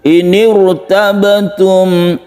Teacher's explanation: maka ra-nya ini tidak dibaca tipis, akan tetapi dibaca tebal atau tabkhim. Jadi membacanya inir sambil mulutnya, istilahnya kalau Jawa itu agak mencucu.